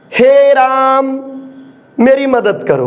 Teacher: ये प्लुत स्वर वास्तव में ह्रस्व और दीर्घ दोनों से ज्यादा समय लेता है, अर्थात 3 गुना समय लेता है, ज्यादा समय लेता है, उसको प्लुत स्वर कहते हैं।